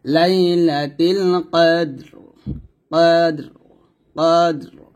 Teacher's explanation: ডালটাকে কলকলা করতে হবে র টাকে সেকেন্ড ধরতে হবে এবং র টাকে মোটা করতে হবে